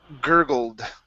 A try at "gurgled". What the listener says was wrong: give me a D here at the end. We're going to say gurgled and.